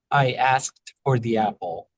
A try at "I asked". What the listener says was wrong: Yeah, I think that we can do even a little bit less crispness on that K still. I asked.